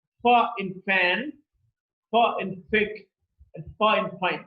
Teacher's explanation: voiceless because the vocal cords are held loosely apart and when the air passes through there is no vibration in the vocal cords · The place of articulation is labiodental, and the manner of articulation is it's fricative. Now, fricative because there's a stricture of close approximation. When the air passes through, there's a lot of friction. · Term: voiceless labiodental fricative